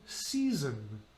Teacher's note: The first one is an S, and the second one is a Z sound.